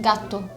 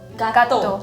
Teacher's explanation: It's like you slightly stop at the first T and then you pronounce the second one.